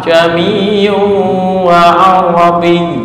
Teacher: Tashil itu memudahkan, artinya membaca antara huruf alif dan hamzah.